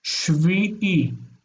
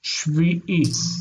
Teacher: That internal I is inserted in there, so it's not Shiv, but Shvi.